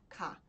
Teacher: k lembra bastante o g mas vocês precisam soltar o ar para pronunciar essa consoante